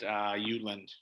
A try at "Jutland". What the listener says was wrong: You're making the J's silent too. No, you've been up in Scandinavia a little too long. You're starting to make all these letters silent.